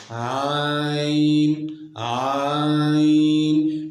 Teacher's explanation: عین کے ادا کرتے وقت زبان کی جڑ اوپر کے تالو کی طرف نہیں اٹھتی بلکہ نیچے ہی رہتی ہے، جس کی وجہ سے یہ حرف باریک رہتا ہے۔ عین عین، یہ حرف باریک ہے۔ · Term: استفال